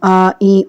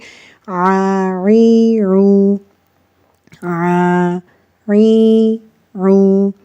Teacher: تو گلے کا جو درمیان والا حصہ ہے وہاں سے ہم عین کو ادا کرتے ہیں۔ عین کو ادا کرتے وقت گلے کے درمیان میں تھوڑا سا سٹریس فیل ہوتا ہے، تھوڑا سا دباؤ فیل ہوتا ہے، اور ہم عین کو حمزہ کے ساتھ مکس کر کے نہیں پڑھیں گے۔